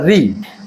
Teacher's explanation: ऋ बोला जाता है आपका मुर्धा से